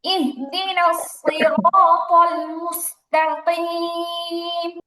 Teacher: আপনার সদ আর মোটা করতে হবে